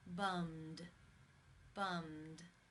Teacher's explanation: The final sound in the infinitive is the M consonant sound. It is voiced. Therefore, it is case 2, and the ed is pronounced as the D.